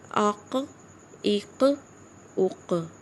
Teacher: اس میں شدت بالکل نہیں، ق اس کی آواز ہی پلٹ رہی ہے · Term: آواز پلٹے گی